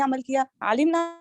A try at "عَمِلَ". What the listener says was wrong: آپ نے یہاں پہ عالمہ اور عاملہ کو مکس نہیں کرنا. کیونکہ عالمہ کو ہوتا ہے عین لام میم, علم, لام عمل ہوتا ہے.